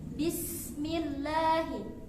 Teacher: di situ ada lafzul jalalah dibaca tarqiq, yaitu tipis.